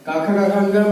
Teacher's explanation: काखा काखा अंगा में क्या है, कंठ का प्रयोग कर रहे हैं